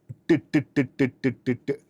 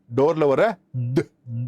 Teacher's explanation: voiced dental stop ப்ளோசிவ்னு இருக்கு